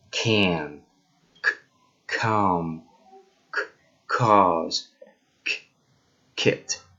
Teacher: the tongue raises a little bit up touching the soft palate right here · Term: K sound